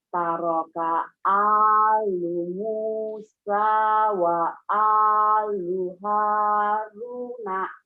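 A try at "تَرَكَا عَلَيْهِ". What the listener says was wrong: Ru'nya panjang. Taraka alu Musa wa alu Haruna.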